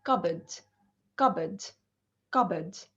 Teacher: to the third word the word cupboard it's not cut booed it is cupboard so the p here is silent and the o a is not pronounced like or it and